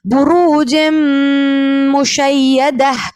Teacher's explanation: गुन्ने की क्वांटिटी भी बढ़ाएंगे और गुन्ना भी करेंगे